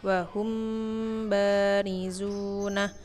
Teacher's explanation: apabila ada mim mati bertemu huruf ba. Jadi kita membacanya harus dengung. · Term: ikhfa safawi